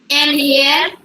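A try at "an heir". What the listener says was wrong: আচ্ছা এই উচ্চারণটা যদি হেয়ার হয় না, অ্যান্ড এয়ার হবে, কেমন? সো এটা হচ্ছে এয়ার হবে উচ্চারণটা, কেমন?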